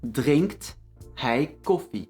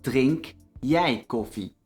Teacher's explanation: we drop the t at drink jij. This is only the case for jij, or the unstressed je.